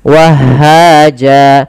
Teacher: Akan tetapi ketika di akhir bacaan dan waqaf, apabila ada fathatain bertemu alif di akhir bacaan, maka dia diiwadkan, diganti menjadi panjang sebagaimana mad tabi'i. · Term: mad iwad